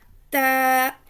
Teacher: زبان کی نوک اوپر سامنے والے 2 دانتوں کی جڑ سے تا ادا ہوتا ہے